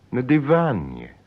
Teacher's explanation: the stress stays on the syllable van